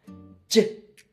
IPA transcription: j